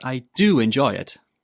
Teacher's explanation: When you're saying this, put the main sentence stress on do.